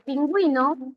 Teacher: tú vas a pronunciar aquí, la U suena, y si suena, se forma diptongo